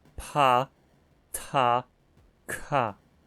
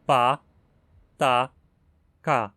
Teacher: Em Unsriquiano, o contraste entre consoantes fortes e fracas não é feito por vozeamento, mas por aspiração. Consoantes fortes são aspiradas, o que quer dizer que soltam muito ar na pronúncia, como se fossem seguidas por um H. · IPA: pʰ, tʰ, kʰ